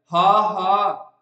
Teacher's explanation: ਤੁਹਾਡਾ ਜਿਹੜਾ ਗਲੇ ਦਾ ਕੰਠ ਹੈਗਾ ਇੱਕ ਵਾਰੀ ਸੁੰਗੜ ਜਾਂਦਾ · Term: ਸੁਰਯੰਤਰੀ ਧੁਨੀ